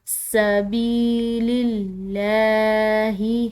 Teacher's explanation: سین، اس کو ادا کرتے ہوئے سیٹی کی آواز ہو، سبیل اللہ، یہاں پر لفظ اللہ کی لام باریک ادا کریں گے کیونکہ اس کے پیچھے کا جو حرف ہے اس کے نیچے زیر ہے۔